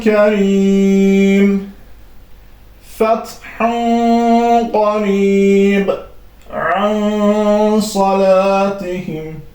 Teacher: açıq şəkildə deyil, gizli bir şəkildə səsi gənizə verərək, burun boşluğuna verərək oxunur. Yəni açıq şəkildə izhar şəklində oxunmur. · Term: ixfa